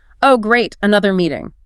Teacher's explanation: Your colleague says, "Oh, great, another meeting." If your brain only processes the word great, you've missed 90% of the message. You have to learn to hear the slight drop in pitch, the flat intonation. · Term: sarcasm